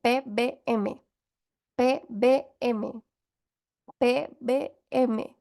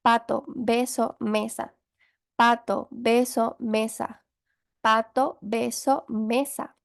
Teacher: se junta el labio de arriba con el labio de abajo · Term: bilabiales